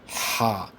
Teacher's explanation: কণ্ঠনালীর মাঝ হতে চাপ দিয়ে উচ্চারণ হবে